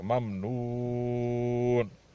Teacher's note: واو کو اس لیے کھینچ رہے ہیں کہ یہ اس کے بعد والے حرف پر سکون آ رہا ہے اور یہ ہوا حرف علت میں سے, اس لیے اس کو لمبا کریں گے.